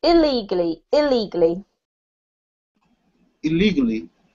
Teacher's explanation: we put quite a heavy emphasis on this ill because it sounds very similar to the word legally if you're speaking quickly